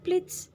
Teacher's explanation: pleats ini juga menggunakan kayak ada S-nya belakangnya, termasuk fricative, sama voiceless alveolar fricative.